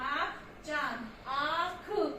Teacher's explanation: वो नाक और मुंह दोनों के साथ मिलकर निकल रहे हैं, उन्हें अनुनासिक स्वर कहते हैं।